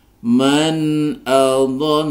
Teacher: nun sukun bertemu dengan Hamzah maka dibaca izhar halq dibaca jelas tidak boleh didengungkan